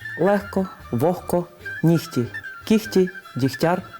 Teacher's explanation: глотковий звук г який у словах легко вогко кігті нігті Діхтяр та похідних від цих слів вимовляється як х